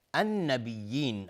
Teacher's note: النبیین الف لام شمسی و نون مشدد دو حرکت غنه میخواد